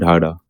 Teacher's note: डा ढा उच्छ्वित व्यंजन, जीभ झटके से ऊपर नीचे होती है